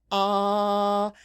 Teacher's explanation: when you say ah your jaw is dropped and your tongue is dropped with it